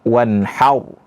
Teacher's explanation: ini ada huruf ra sukun, sebelumnya didahului oleh huruf ha yang fathah, maka dibaca tebal. Jadi tidak dibaca wanhar, tapi dibaca wanhar, tebal bacaannya.